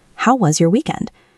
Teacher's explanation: When you say this, pay attention to the intonation. The voice usually goes down slightly at the end of weekend because it is an open question.